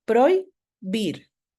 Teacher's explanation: Porque, por ejemplo, yo tengo la palabra prohibir, aquí tengo una H intercalada, pero tengo un diptongo, ¿sí? Lo pronuncio en la misma sílaba, prohibir. En cambio, prohíbo tiene un hiato acentual, pro y bo, ¿sí?